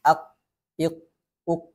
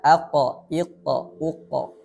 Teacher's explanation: huruf qaf ketika sukun qalqalahnya lemah atau tidak dibunyikan sama sekali. · Ada qalqalah atau pantulan karena sifat huruf qaf yakni adalah qalqalah.